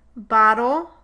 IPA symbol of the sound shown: ə̠